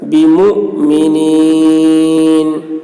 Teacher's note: حمزہ کو اوپر جزم ہے، یہاں پر جھٹکا لگے گا